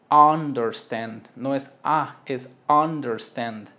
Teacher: este es una a abierta con boca de o